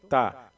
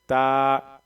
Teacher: تقریباً 2 سیکنڈ کے آس پاس ایک الف کے مقدار کے برابر کھینچ کر کے پڑھیں گے، اس کو لمبا پڑھیں گے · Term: کھڑی زبر